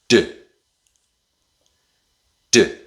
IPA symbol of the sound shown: d